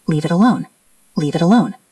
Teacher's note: It ends in t. Alone starts with a vowel. That's a flap t.